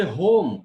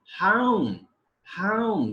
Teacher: We say home. We use monophthong, but they use a diphthong in England, and they say home, home.